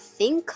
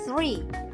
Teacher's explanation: Bunyi ini mewajibkan lidah kita digigit sedikit di antara gigi depan.